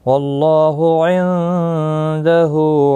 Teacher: واللہ اللہ کا لام پر پڑھا جائے گا زبر کی وجہ سے، عندہ نون ساکن کے بعد دالائے اخفاء حقیقی ہوگا، ہا کے اوپر الٹا پیش ہے، ایک الف کی مقدار کے برابر کھینچ کر پڑھیں گے۔